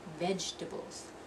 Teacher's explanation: You're going to drop that second syllable